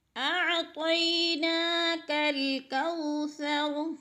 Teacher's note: کھڑی زبر کو ایک الف کے برابر کھینچ کر پڑھنا ہے